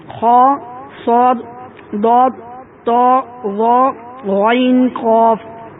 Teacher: حروف مستعلیہ کو ہمیشہ ہر حالت میں پر یعنی موٹا پڑھتے ہیں، اور ان کا مجموعہ خصداغۃ قذ ہے۔